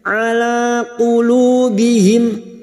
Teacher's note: qulu duma diikuti waw sukun 2 harokat mad tabi'i